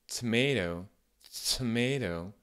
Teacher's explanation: c'est un peu comme un T français, sauf qu'il y a comme un petit délai entre le moment où je commence à faire mon T, et ensuite le moment où je le relâche et où je commence à avoir de l'air qui sort de la bouche, où je commence à voiser les sons. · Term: petit peu aspiré